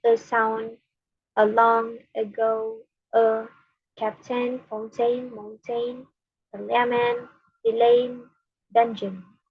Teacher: it's produced with the tongue in a relaxed central position in the mouth, neither high nor low, front nor back. This makes it acoustically and perceptually similar to other vowels, giving it a versatile and ambiguous quality. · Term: schwa